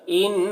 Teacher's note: ان نون مشدد ہے تو غنہ کریں گے